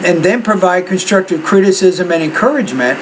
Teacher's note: I would put the tone a little bit higher on encouragement. You have to do both of those because you're not presenting a contrast here, you're just stating two ideas.